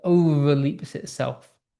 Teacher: It is intensified by the connaissance of the harsh, fricative V sounds, so overleaps itself. So this sort of fricative V sound really intensifies the unstable nature of his ambition